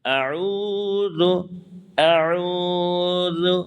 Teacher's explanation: اس کے بعد واو مدہ ہے، واو مدہ کو ایک الف کے برابر کھینچتے ہیں۔ واو مدہ کو ایک الف، یعنی اس کو یوں کہیں کہ 1 سیکنڈ یا 2 سیکنڈ 3 سیکنڈ تک آپ کھینچ سکتے ہیں۔